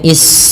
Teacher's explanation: alirkan nafas ketika melafalkan sin karena sin punya sifat hames